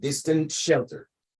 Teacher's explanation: The distant shelter. That T would be swallowed.